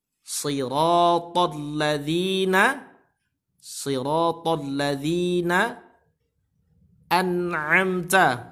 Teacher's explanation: An'amta semuanya idhar, semuanya jelas. Tidak boleh kita dengungkan dan kita lama-lama di situ.